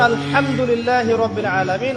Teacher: হা এর মাখরাজ কোথায় কন্ঠনালীর মাঝখান থেকে